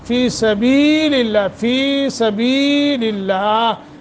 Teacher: لفظ اللہ کو باریک پڑھنا ہے